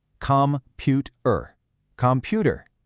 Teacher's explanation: notice how the bouncing rhythm shifts so the stress lands perfectly in the middle.